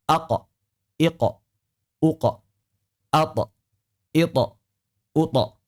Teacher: Huruf qalqalah yang sukun yaitu qaf dan ta ini selalu tebal, selalu tafkhim.